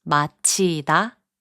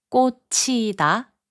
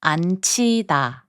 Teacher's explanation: 지읒 and 히응 are combined to make a 치읒 sound